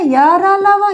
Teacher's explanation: अंतस्थ व्यंजन सघोष है य र लव ये चारों सघोष